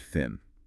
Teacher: Voiceless because there's no vibration in your vocal cords. Dental because your tongue is lightly between your teeth. And fricative because there's that constant air flow creating a bit of friction.